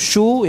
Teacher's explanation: Lain halnya kalau shin ini berharakat dhammah, ya, maka ya harus mencucu, shu, ya, mencucu.